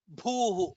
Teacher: Anirvinnah sthavishto bhuhu, bha is also mahaprana.